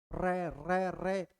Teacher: जीवा क्या होती है थोड़ी सी पीछे मुड़ती है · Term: लुंठित व्यंजन